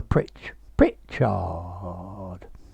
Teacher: you can lengthen this hard as much as you want but you've got to put the stress on the first bit on the pritch